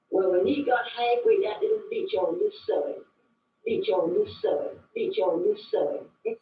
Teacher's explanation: Lumbi English speakers share vowel sounds present in the Outer Banks accent where Tide is pronounced toid.